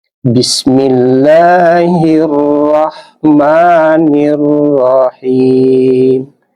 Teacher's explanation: Ra, ini ra-nya kita baca tebal karena berbaris di atas. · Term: tafkhim